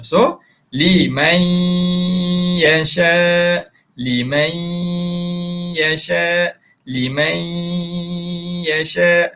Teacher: panjangkan sebab ada dengung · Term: idgham bi gunnah